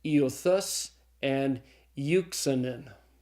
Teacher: the last two diphthongs, epsilon upsilon and eta upsilon, are pronounced u, as in feud.